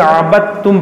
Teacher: دال کی آواز آئے گی نہیں، دال جو ہے تا میں داخل ہو گئی۔ یہاں پر قاعدہ لگتا ہے ادغام تام کا قاعدہ یہاں پر لگتا ہے، ادغام تام مکمل داخل ہو گیا، تا جو ہے دال جو ہے تا میں داخل ہو گیا، تو اس کو عبد تم نہیں بلکہ عبد تم پڑھیں گے۔